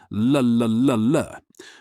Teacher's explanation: For the English L, like in light, your tongue presses firmly against the ridge behind your top teeth